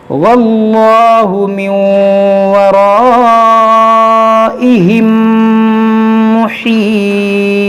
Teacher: یہاں پر دیکھیں نون ساکن کے بعد واو ہے, یہاں پر ادغام ہوگا, اور یہاں الف مدہ کے بعد حمزہ ہے تو یہاں پر مد متصل ہوگا, اور یہاں میم ساکن کے بعد دوسری میم ہے تو یہاں پر ادغام شفوی ہوگا